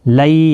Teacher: یا کے اوپر کھڑی زبر بھی ہے، ایک الف کی مقدار کے برابر کھینچ کر بھی پڑھیں گے. لئی یا لین ہے، تھوڑا نرمی کے ساتھ کھینچ کر ادا کریں گے